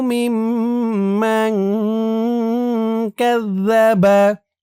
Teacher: এখানে ওয়াজিব গুন্না হবে। হরকতের পরে মিমের উপর তাসদীদ।